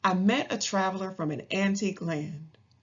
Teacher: and the same number of stressed syllables in each line five the rhythm is unstressed stressed unstressed stressed